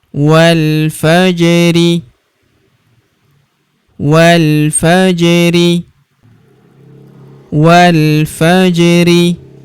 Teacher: Huruf ja berharakat sukun kita pantulkan atau kita qalqalahkan.